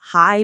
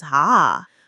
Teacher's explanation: If you hear a southern accent, vowels stretch out. Hi becomes ha.